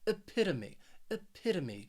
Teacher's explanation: The reason why this word, people have some trouble with this word, is because of that third and fourth syllable. That third syllable, you have the schwa, that sound, and that final syllable, it's just me, that long E. So that O-M-E spelling, it is really pronounced me, epitome, epitome.